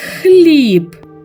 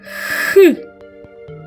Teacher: х голосний чи приголосний є у нас перешкода у ротику так язичок створює перешкоду повітрю Отже звук х приголосний